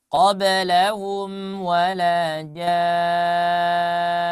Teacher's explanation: Nah, ini wala lanya itu seharusnya dibaca panjang ya.